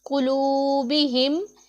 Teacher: और कुलूबिहिम में कुलूबिहिम, इसमें हमने इस बात का ध्यान रखना है कि ये काफ हमारा पुर पढ़ा जाने वाला हरफ है, इसे हमने पुर पढ़ना है। और वाव मद्दा है, इसे भी हमने एक अलिफ के जितना लंबा करना है।